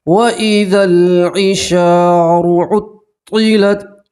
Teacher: الف مدہ میں آپ ایک الف کے برابر کھینچ کر پڑھیں گے